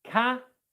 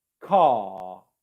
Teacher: And for R, the tongue is much further back in the mouth.